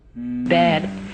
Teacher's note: It's a little plateau and then a fall. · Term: inflection